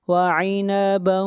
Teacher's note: گا۔ فأنبتنا فيها حبا فأنبتنا فيها حبا وعنبا یہاں پر تنوین کے بعد حروف یرملون میں سے واو ہے، یہاں پر ادغام مع الغنہ ہوگا